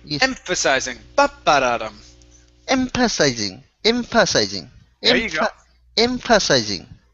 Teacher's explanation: is an f emphasizing precising impulse impressionizing emphasizing there you go the stress is at the beginning